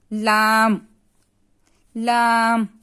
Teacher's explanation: جب زبان کی کروٹ کا آخری سی نوک تک کا حصہ جب اوپر کے داڑھ اور دانتوں کے مسوڑوں سے لگے اس سے لام ادا ہوتا ہے